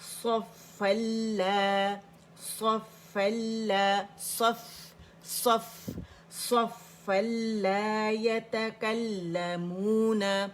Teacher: صفا لا یتکلمون، صفا لا یتکلمون، صفن، اور جب اس کا نون ہے تنوین کا وہ لام کے اندر چلا گیا، لام مشدد ہو گیا